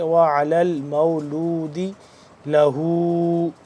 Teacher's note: ہا الٹا پیش ہو، تھوڑا سا لمبا کریں گے